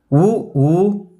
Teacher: இதழ்களை குவிப்பதால் பிறக்கும் உயிரெழுத்துக்கள்